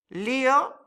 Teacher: Lío lleva tilde porque es un hiato, ¿vale? Que recae la sílaba tónica, la sílaba fuerte sobre la vocal cerrada, la I